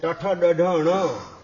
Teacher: તાળવામાંથી ઉત્પન્ન થાય એટલે તાલવ્ય કહેવાય અને ટઠ ડઢ ણ એ મૂર્ધન્ય માથાના નીચેના ભાગમાંથી ઉત્પન્ન થાય એ મૂર્ધન્ય કહેવાય તથ તથ દધ ન એ દંતીય કહેવાય દાંત